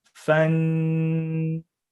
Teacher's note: when it's noon with sukoon, then we hold the noon sound